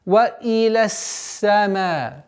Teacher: С огласовки фатха уходим на удвоенный звук син и удерживаем свойство свист.